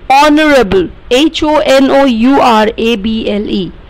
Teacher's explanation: H is silent here. So we say honorable, which is O sound. O, honorable.